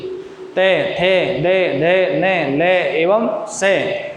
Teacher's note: इनको जब उच्चारण करेंगे अपन लरी, ते, थे, दे, धे, ने, ले एवं से, तो इनका जब उच्चारण करते हैं तो जीभ हमारी जो है वो दांतों से स्पर्श करती है।